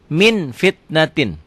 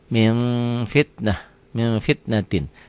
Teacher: sini ada m-nya bila nun mati atau tanwin bertemu dengan Fa bunyinya berubah menjadi mm akan tetapi mutlak tidak tertutup rapat masih ada udara yang keluar ketika membacanya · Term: ikhfa, Ikhfa